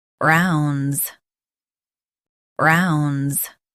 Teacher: In US, stress ron and blend z softly at the end.